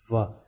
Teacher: जब वाह हम करेंगे वाह, पहले जब दांत होंठ पे लगेंगे तब होंठ थोड़ा गोल टाइप में हो जाता है, यू शेप बना लेता है, यू शेप ऐसा बना लेता है।